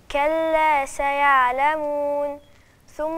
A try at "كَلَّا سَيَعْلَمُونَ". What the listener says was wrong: فين النون؟ لازم أعمل توسط عشان لو ما عملتش توسط النون إيه مش هتبان من صفاتها كده.